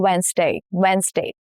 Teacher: the middle consonants got swallowed up in fast speech, and that is why we lost D, the sound of D